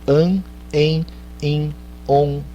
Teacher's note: essas coisas an, en, in, on, são o que a gente chama de vogais nasais, porque elas passam pelo nariz